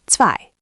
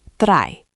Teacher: Zwei starts with ts, drei starts with a d r sound.